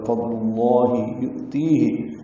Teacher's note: حمزہ ساکن جھٹکے سے ادا ہوگا، تی یا مدہ ہے، 2 حرکات لمبا کریں گے۔